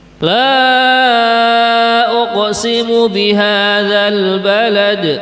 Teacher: di sini ada contoh bacaan panjang 4 harokat mad jaiz munfasil